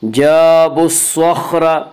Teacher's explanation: سواد کو پر پڑھیں گے, سواد حروف مستعلیہ میں سے ہے, اور خا کو بھی پر پڑھیں گے, خا بھی حروف مستعلیہ میں سے, حروف مستعلیہ سات ہیں جن کا مجموعہ خصہ ضغ تنقج ہے, یعنی خا صاد ضاد غین طا قاف ضا, یہ حروف مستعلیہ ہیں, ہمیشہ ہر حال میں پر پڑھے جاتے ہیں.